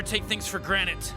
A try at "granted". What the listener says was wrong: It's granted! With a D!